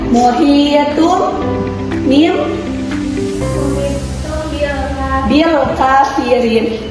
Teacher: Jadi anak-anak intinya iqlab yaitu menukarkan nun sukun dengan huruf mim. Jadi nun sukunnya tidak dibaca jelas tapi ditukarkan dengan huruf mim. · Yang harusnya kan disitu muhiyatun, tapi dikarenakan huruf nun sukunnya berhadapan dengan ba, maka diubah menjadi mim. Jadi dibacanya muhiyatun mim bil kafirin.